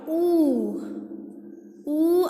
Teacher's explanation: Oo is rounded. It is back and it is close. Back and close.